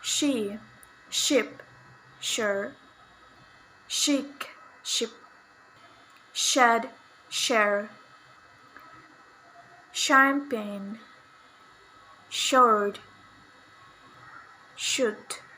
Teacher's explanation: voiceless palato-alveolar fricative sound